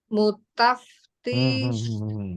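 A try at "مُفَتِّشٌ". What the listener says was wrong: Bukan. Fa-nya dulu. Fa dulu baru ta.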